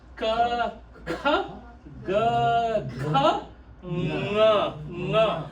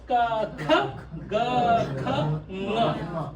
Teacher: This entire row comes from, right? Comes from the throat, right? Kantha, it's a guttural sound.